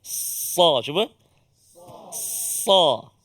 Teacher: Antaranya lagi dia ada isti'la, dia ada itbaq, kan, sempit rongga lidah, ruang apa lidah kita dengan lelangit, kan. Jadi bila kita sebut tu dia terangkat, sikit lidah kita. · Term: huruf sad